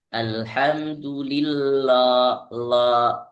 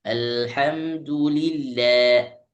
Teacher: Alhamdulillah. Lnya ditipiskan sedikit. Jangan terdengar tebal.